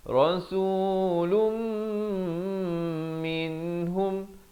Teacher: lum di sini tekankan dan berserta dengung